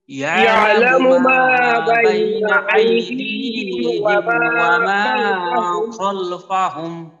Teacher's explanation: ওয়ামা মা এক আলিফ টান আর শেষে মিম সাকিনের ইজহার। তো মিম সাকিনের পরে যদি বা মিম না থাকে তাহলে এই মিম সাকিনের ইজহার, চাই অন্য কোনো হরফ থাকুক বা না থাকুক।